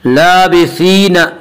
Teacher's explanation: या मद्दा को एक अलिफ के बराबर खींच कर पढ़ेंगे।